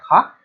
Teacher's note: स्पर्श व्यंजन कंठ्य ध्वनि, अघोष और महाप्राण ध्वनि है